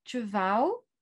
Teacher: Au XIIIe siècle, on ne prononce plus les consonnes finales, donc on devait prononcer tvao.